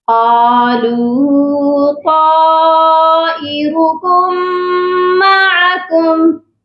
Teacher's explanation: واو مدہ ہے قالو کے ساتھ، اس کو بھی ہم نے ایک الف کے برابر لمبا کرنا ہے